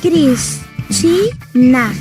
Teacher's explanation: o mais forte é a ti, mesmo que não tenha acento escrito, e é a penúltima sílaba. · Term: sílaba tônica